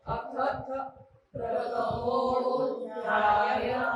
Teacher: थ नंतर मी ओट बंद करणार आहे अथ प्रथमोध्याय म्हणा आता मो नंतर मी थोडासा वाढवणार आहे तो ओ आणि मग जीभ वरती लावणार आहे दाताला